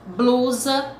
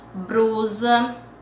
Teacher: Na fala ocorrem também alguns registros diferentes da norma padrão para os encontros em que a segunda consoante é L. Nessas variantes linguísticas substitui-se o L por R.